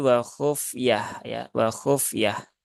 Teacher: ini ada tak marbutah ya, maka kalau wakof maka menjadi wakhufiyah